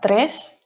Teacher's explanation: the three and the four you can see we pronounce tres we pronounce the r very strongly so it's important to roll the tongue